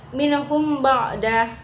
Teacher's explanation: Selanjutnya minhum ba'da ikhfa safawi, karena ada huruf mim mati atau sukun bertemu dengan huruf ba, cara membacanya samar di bibir dan didengungkan